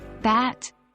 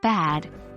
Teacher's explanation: For instance, consider bat and bad. The only difference is the final sound, one voiceless, the other voiced, and yet, the two words have entirely different meanings.